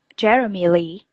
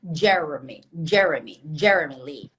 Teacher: the stress of this name is on the first vowel, so it's Jeremy Lee.